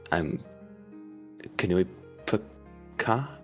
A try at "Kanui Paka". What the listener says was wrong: Yes, although the pronunciation is not quite right. Every syllable is very enunciated. Kanui Paka.